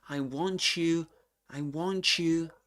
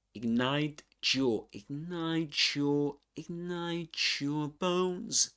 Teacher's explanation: Combines the t with a y. The first sound in your is y.